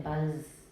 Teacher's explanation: Voicing only goes halfway through the final obstruent, but please don't forget the first half is still voiced.